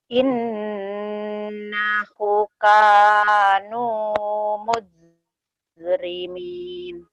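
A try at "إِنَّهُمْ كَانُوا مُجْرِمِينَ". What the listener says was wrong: Oke, humnya dapetin, Teh. Lagi hum gitu. Mujrimin. Ya, kol-kolah, Teh. Innahum kanu mujrimin.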